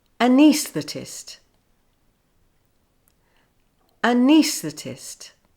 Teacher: the stress is now on the AE, which changes the sound from a to e. The first syllable also changes to the schwa sound, a.